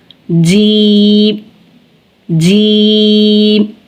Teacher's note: زبان کا درمیان جب تالو کے درمیان سے ملے گا تو جیم ادا ہوگا